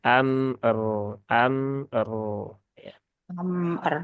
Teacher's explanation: maka dia sukunnya dibaca dengan tafkhim ya dengan tebal